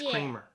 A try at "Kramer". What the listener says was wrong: Not Creamer. His name is Kramer. Cray.